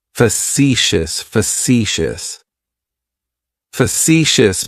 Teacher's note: has three syllables and the stress is on that second syllable. · It's like you're just saying the letter C for C. That first syllable has that schwa, that uh sound.